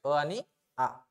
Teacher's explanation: हे सजातीय स्वर आहे. यांचं उच्चारस्थान एकच आहे. कंठ आहे त्यांचं उच्चारस्थान. हे कंठातून निघतात.